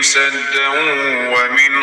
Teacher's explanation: Burda da idğ baş verdi. Nun hərfi vaf hərfi ilə birləşdi. Və biz nunu gizlədirik. Sanki vaf hərfin təkdidli deyirikə yenə.